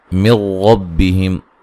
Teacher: نون ساکن کا یہاں ادغام ہے لیکن بلا غنہ ہے